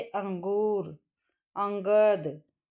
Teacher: स्वर के बाद आने वाला व्यंजन है जिसकी ध्वनि नाक से निकलती है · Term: अनुस्वार